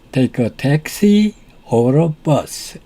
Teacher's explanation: Notice the rising intonation on taxi, the first choice, and falling intonation on bus. 여기에서 첫 번째 선택 요소인 택시에서는 억양이 올라가고 두 번째 선택 요소인 버스에서는 억양이 밑으로 내려온 것에 주목하십시오.